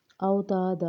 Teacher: او میں واو ساکن ہے پیچھے والے حرف پہ زبر ہے، واو لین ہوگی، تا میں الف مدہ ہو رہی ہے، دا میں الف مدہ ہو رہی ہے۔